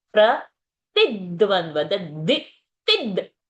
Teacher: When we say ti, we are giving pressure on ti. And next is dvandva's the is included into the ti. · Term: dvitva